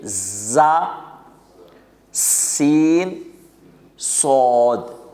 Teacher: زا کو ذرا سخت پڑھیں گے اور سین کو ذرا پتلا پڑھیں گے اور صاد کو ذرا موٹا پڑھیں گے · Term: حروف صفیریہ